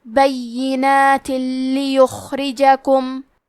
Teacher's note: ادغام کا معنی ہے حرف کو حرف میں داخل کرنا تو ہم تنوین کو لام میں ملا کے بغیر غنہ سے لیکن تشدید کے ساتھ یہ حکم کو ادا کریں گے